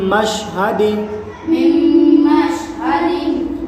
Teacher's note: نون ساکن کے بعد میم آ رہا ہے تو یہاں ادغام ہوگا، یعنی گننا کر کے پڑھیں گے۔